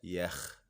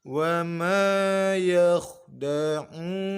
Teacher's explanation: huruf kha kita baca tebal sebab kha sukun sebelumnya berharokat fathah. Bukan dibaca yakh, tapi mestinya kita tebalkan.